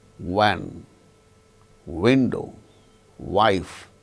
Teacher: it should be pronounced with the two labial lips as the active and passive articulators. Lower lip, active articulator, upper lip, passive articulator. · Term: bilabial sound